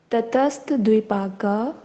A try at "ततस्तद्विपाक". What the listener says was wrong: नहीं तटस्थ नहीं, ततस तद्विपाक, तद्वि